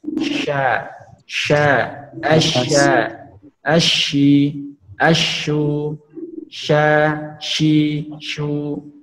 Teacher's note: Shin cara mengucapkannya itu menempelkan tengah lidah ke langit-langit, menempelkan anak lidah ke langit-langit atau menggesekannya dengan sifat yang hamas, yaitu mengeluarkan nafas. Sya, sya, asya, ashi, asyu, sya, shi, shu, ya, menghembuskan nafas hamas.